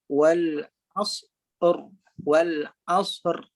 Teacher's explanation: Ra di sifat takrir, bergetar, cuma getaran tu dibaca dengan tebal.